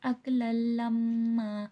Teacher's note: لما پہ میم مشدد غنہ ہوگا